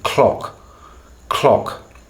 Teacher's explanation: And it's not that obvious what the tongue is doing, but it's very complex and the timing is very subtle and precise. I almost feel like the dorsal region of the tongue back here and the tip of the tongue are connecting somehow at the same time, or as if the release to get the beginning of the cut there, that takes place when the tongue tip has already touched to create the L.